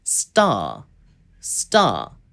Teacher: 또 다른 경우로 T로 스펠링이 시작을 하지 않더라도 첫 번째 시작하는 음이 약간 T 소리가 들어가는, 예를 들어서 star, star 이런 단어와 같은 경우에는 ST로 그냥 발음이 시작이 되는 거기 때문에 여기에서도 미국식, 영국식 똑같이 star 아니면 star 이런 식으로 st, 이 트 소리, 뜨 소리 같은 경우에는 명확하게 미국, 영국 구분하지 않고 명확하게 발음을 해줍니다. 그리고 또 단어가 T로 끝나는 경우에도 명확한 T 발음을 해주는데요.